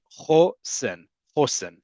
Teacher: the emphasis on the first syllable